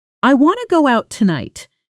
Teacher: with want to collapsing into wanna and the stress landing hard on go and night while everything else shrinks